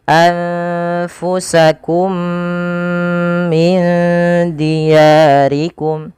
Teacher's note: memasukkan mim pertama kepada mim kedua dan ditahan suara nya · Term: idgham mimi